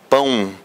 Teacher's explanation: O A aqui é o mais forte. E esse O, na verdade, soa como se fosse o quê, turma? Um som de U